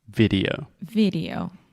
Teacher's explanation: say video but in English we say vid EO video so first we have a hard D sound vid and then we really exaggerate the O at the end